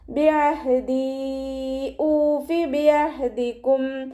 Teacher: മഖ്റജ് വസത്തുൽ ഹൽക്ക്, തൊണ്ടയുടെ മധ്യഭാഗം. സൗണ്ട് ക്ലിയർ ആക്കി കൊടുക്കുക